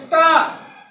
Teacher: ट, ठ, ड, ढ, ड़ और रा, शा का उच्चारण स्थान मूर्धा से होता है। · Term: मूर्धन्य वर्ण